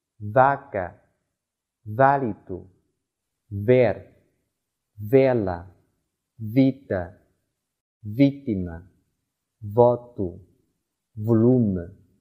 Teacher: 、鞋服、家具、地板或墙面装饰等。软木还是葡萄牙历史的一部分，在许多历史遗迹和旅游景点中均可见其身影。▁V▁发▁V，▁ 发音时上齿轻触下唇，气流由唇齿间的缝隙通过，摩擦成音